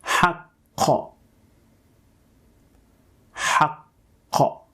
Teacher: Notice how the tongue raises itself and hits or touches the uvula. And once it does that, the sound is produced. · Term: qaf